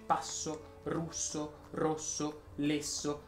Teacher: la s si pronuncia sorda se è raddoppiato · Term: s sorda